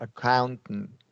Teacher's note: Glottal, and then a regular stop T because of the ends there.